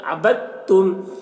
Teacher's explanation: جیسے عبدتم، یہاں پر دیکھیے دال میں جزم ہے اور تا میں تشدید ہے، تو جزم والا حرف اور تشدید والا حرف دونوں ایک ساتھ ہے، تو یہاں پر جزم والا حرف جو دال ہے اس کو نہیں پڑھیں گے، بلکہ با کو تا کے ساتھ ملا کر پڑھیں گے